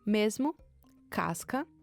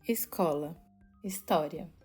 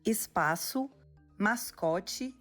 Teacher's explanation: o nome que a linguística dá para esse som é fricativa alveolar